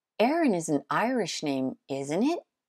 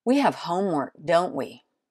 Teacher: yes/no question if you lower a pitch at the end you're pretty sure you know the answer to the question